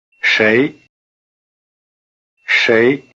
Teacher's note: Have you been paying attention to the tone? It's the rising tone.